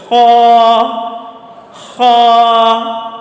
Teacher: خا جو ہے یہ ہمارے حلق کا سب سے اوپر والا حصہ جو منہ کی طرف ہے وہاں سے ادا ہوتا ہے۔ خا کو موٹا کر کے پڑھتے ہیں۔